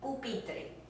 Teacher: student desk my little kids love to say this word pupiter sounds like the english p without the puff of air coming out it's a drier sound